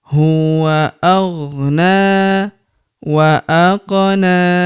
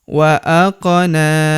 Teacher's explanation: Huruf qof berharakat sukun kita pantulkan atau kita qalqalahkan. Wa aqna. Huruf na kita panjangkan dua harakat karena terdapat tanda alif kecil di atasnya.